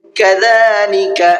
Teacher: كذلك چھوٹا کاف ہے، شروع میں بھی اور آخر میں بھی، تو دونوں جگہ پر باریک کر کے پڑھنا ہے، پر کر کے نہیں پڑھنا ہے